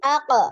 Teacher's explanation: dia lebih tebal ya karena naik pangkal lidah naik AQ IQ uq AQ IQ uq ini maju jadinya makhrajnya maju